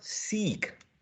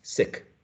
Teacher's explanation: Están haciendo el mismo sonido, pero este lo están haciendo más corto y este lo están haciendo más largo. Pero no es solamente la duración del sonido, también tienen que acompañarlo con la extensión de los labios. Y, como si se sonrieran. · en la producción del segundo, los labios se estiran más.